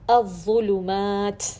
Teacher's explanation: پیش کے ساتھ تیسرا درجہ تفخیم کا